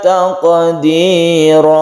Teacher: fathaten diganti menjadi mat. Itu artinya mat iwad, panjangnya satu alif saja.